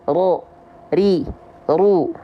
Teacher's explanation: takrir itu dia bergetar tapi sedikit · jadi kita lafalkan huruf ro tidak dengan getaran yang berlebihan